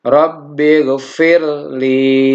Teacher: Nah, di sini kita menemukan ada ro sukun bertemu dengan lam. Jadi tidak dibaca ro-nya diidghamkan.